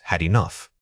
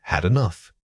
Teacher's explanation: The ed ending on had often reduces to a weak syllable that links directly into enough. Think of it as almost disappearing but providing just enough air pressure to signal the connection.